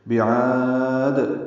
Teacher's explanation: بعاد عین وسط حلق سے ادا کریں گے، لمبا کریں گے، اور وقف دال ساکن پہ قلقلہ ہوگا. ملانے کی صورت میں بعاد دن میں اظہار ہوگا، کیونکہ آگے ارم میں حمزہ آ رہا ہے.